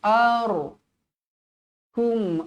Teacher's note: ro dibaca tebal kerana sebelum huruf ro mati ni berbaris atas